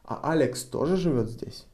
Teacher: if we want to know if Alex is also living here, we need to raise our intonation on Alex.